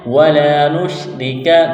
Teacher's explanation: الف زبر لا، الف مدہ ہے، الف کے برابر کھینچنا ہے، را کو باریک کرنا ہے، را کے نیچے زیر ہے ، کاف کو باریک کرنا ہے، ولا نشرک